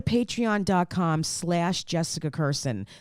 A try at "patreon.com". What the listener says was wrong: I think you said patriot.com.